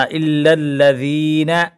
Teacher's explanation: اس ذال کو ہم باریک پڑھیں گے